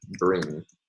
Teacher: in the word bring, there we have a velar nasal at the end of the word